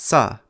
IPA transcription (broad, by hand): s